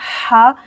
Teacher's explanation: दरमियान से हा, हवा निकलेगा मुंह से, हा, यहाँ पढ़ेंगे भारी आवाज में, हा, दुहाहा।